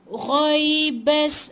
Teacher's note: ada bunyi bergeser dekat anak tekak tu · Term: huruf ghain